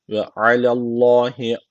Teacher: Allah lafzı burada kalın okunacak çünkü öncesindeki harfi harekesi üstte